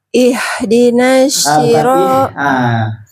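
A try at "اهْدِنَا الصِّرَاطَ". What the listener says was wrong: Nah itu huruf keliru. Bukan ih. Nah itu pakai ha. Nah kita berusaha sampai sod si. Hak masih hak ih.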